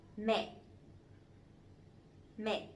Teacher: But this one has the dot, the dấu nặng, the strong tone, so it has to be down and it has to be stronger a little bit